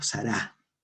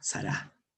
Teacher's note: Este signo solo trabaja con las vocales A y U, y en la oralidad se pronuncia de forma alargada, es decir, en 2 tiempos seguidos como si fueran 2 vocales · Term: alargamiento vocálico